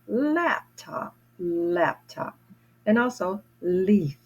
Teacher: My tongue is at the top of my teeth in the back and at the bridge in the top. Ooh. I have to place my tongue there to make that sound.